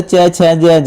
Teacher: च, छ, ज, ज यह तालव्य होते हैं भाई